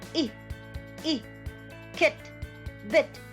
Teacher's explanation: notice how your tongue is raising in the blade or the front part of the tongue it's very close to the roof of the mouth to the palate